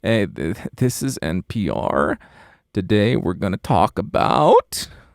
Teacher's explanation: Maybe vocal fry with upspeak.